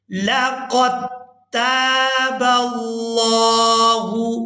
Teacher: لقد تاب اللہ، یہاں پر بعض لوگ مسٹیک کر جاتے ہیں کہ قاف کو دال ساکن کے ساتھ ملا کر ادا کر دیتے ہیں، تو ہم نے دال کو یہاں پر ادا نہیں کرنا، قاف کو تا مشدد کے ساتھ ملائیں گے۔